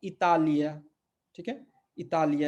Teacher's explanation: फिर से यहाँ पे हम इसको इटालिया नहीं पढ़ सकते, क्यों, क्योंकि टी जो है त है